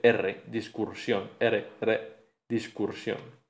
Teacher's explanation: se añade el sonido vibrante simple R